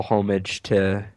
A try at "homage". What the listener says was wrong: Homage. Homage. I thought it was homage. I thought the H was silent.